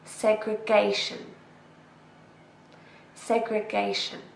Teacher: we stress the third syllable.